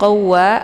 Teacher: ada waw yang bertasydid. Ini cara bacanya ditekan saja kemudian langsung diidghamkan ke dalam huruf waw ataupun dileburkan.